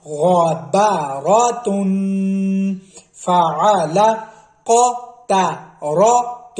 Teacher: بعض الفاظ ایسے ہیں جس کا پہلا لفظ موٹا، دوسرا باریک اور تیسرا پھر موٹا، مطلب ہے درمیان والا باریک آتا ہے. تو آپ نے کوشش کرنی ہے پہلے اور تیسرے کو موٹا تو ادا کرنا ہے، درمیان والے کو موٹا نہیں کرنا پھر ان دونوں کی وجہ سے، ٹھیک ہے.